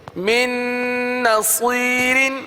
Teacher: دیکھیے گنہ کریں گے نون پر اور من کا جو نون ہے وہ دوسری نون میں مل جائے گا مدغم ہو جائے گا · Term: ادغام